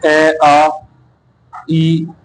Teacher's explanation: अवृतमुखी है जिनमें होठ वृत्त या गोलाकार नहीं होते